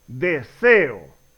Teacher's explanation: ambas son vocales abiertas por lo tanto se separan y forman hiato